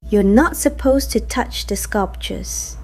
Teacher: In the first one, to is said quickly with a soft schwa sound since a word follows it.